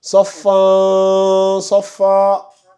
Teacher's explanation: on tend vers le an, mais le noun final tu le prononces pas